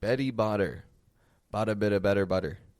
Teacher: A lot of T's in there, but very few of them are actually pronounced, if any. A lot of flap T's is actually what we're hearing